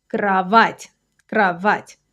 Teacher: It's a soft ending. That little apostrophe means that you have to soften the t slightly.